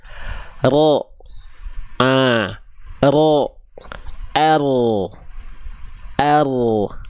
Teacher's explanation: huruf ro itu dilafalkan lidahnya bukan betul-betul ujungnya tapi dari punggung punggung lidah